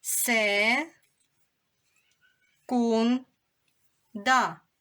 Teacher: На який склад падає наголос? Наголос падає на другий склад.